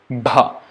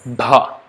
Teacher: it is labial with the lips, voiced from here, ba, and aspirated, bha. Labial, voiced, aspirated sound, bha. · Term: BH, Bha